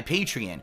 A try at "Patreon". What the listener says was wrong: How does he mispronounce Patreon? It's Patreon. It's O-N at the end, not E-N, I-N, or A-N. I mean, wear your glasses.